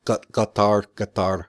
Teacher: I know it's pronounced with a glottal stop